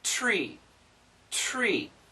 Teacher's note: touch the teeth but keep it on that ledge tree tree so you start with a t t and then the tongue comes back for the r and the r sound the tongue is up here the tongue